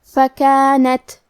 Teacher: کلمت فکانت کے آخری میں تا ساکن ہے، لہذا ہمیں تا کو ہمزے سے پڑھنا ہے